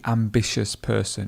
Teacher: the stress would go in the middle on the I.